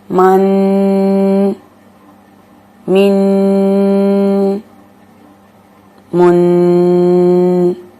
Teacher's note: میں ناک میں آواز لے کے گئی ہوں، لمبا کیا ہے تو یہ اس طرح سے لمبا نہیں ہوا، یہ ناک میں آواز جانے کی وجہ سے لمبا ہوا ہے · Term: غنہ